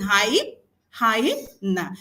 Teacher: Hyena is a three syllable word as we can see and the stress is on the long syllable.